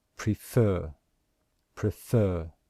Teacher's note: can you hear that we stress the second syllable? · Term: stressed syllable